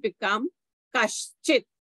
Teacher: because the visarga is followed by a cha, so the visarga becomes a sh